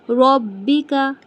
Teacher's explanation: र को मोटा बा को जमा के रब्बिका र को मोटा।